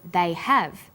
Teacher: Because stressed the auxiliary verb have, the H sound is pronounced.